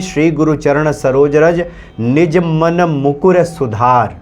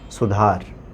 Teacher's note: ह्रस्व इकार और ह्रस उकार की जो मात्रा है, उसका उच्चारण नहीं किया जाता।